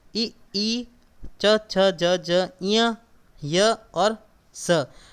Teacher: इनका उच्चारण जो है वो तालु से होता है